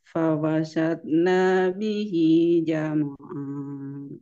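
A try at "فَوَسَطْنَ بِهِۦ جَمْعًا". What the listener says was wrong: Diulang lagi, nanya dipendekin. Fawasatna bihi jam'a.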